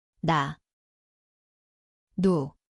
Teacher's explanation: 니은, Zvuči kao N. Mjesto je vrh jezika, gornja desni.